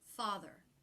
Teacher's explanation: the stressed syllable will have shape in it but the unstressed r r will be very flat and low in Pitch